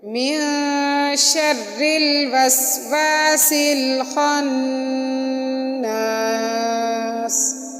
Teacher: یہاں بھی من میں نون ساکن اور آگے حروف اخفا میں سے شین، اس وجہ سے من ہم نے اخفا کیا، اور شر را باریک کیونکہ را کے نیچے زیر ہے، وسواسل سین کو لام کے ساتھ ملایا، اور خناس میں خا کو موٹا کر کے نون کے اوپر غنہ کیا اور سین کے ساتھ سین کو ہم نے سیٹی کی آواز میں پڑھا.